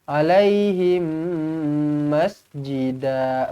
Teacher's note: mim kosong bertemu mim sabdu, idgham mithlain saghir, dengungkan 2 harakat, rapatkan bibir